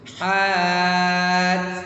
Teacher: ha pedas, kemudian dikasih angin, tutupkan dengan huruf ta yang sukun.